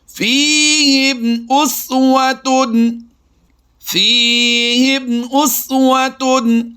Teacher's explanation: آئیے اظہار شفوی کی مثال جو پہلی ہم آپ کو سکھانے والے ہیں، اس میں غور کیجئے گا کہ میم ساکن کے بعد حمزہ با اور میم کے علاوہ آیا ہے، تو ہم یہاں پر کیا کریں گے؟ اظہار شفوی کرتے ہوئے بغیر غنہ کے پڑھیں گے